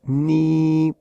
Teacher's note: primer tono que va siempre en la línea 5, que es la más alta, ni, un segundo tono que va de la línea 3 a la 5, ni, un tercer tono que bajaría de la 2 a la 1 y después subiría hasta la 4, ni, este era ni y este es ni.